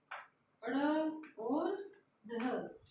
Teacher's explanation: झटके के साथ फेंकना मतलब हमारी जीभ जो है ऊपर जाएगी, फिर एक झटके के साथ नीचे आ जाएगी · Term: उत्क्षिप्त